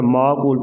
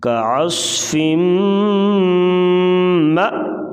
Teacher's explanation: یہ میم کے ساتھ جو ہے یہ حمزہ لکھا ہوا ہے تو اس کو جھٹکے سے پڑھیں گے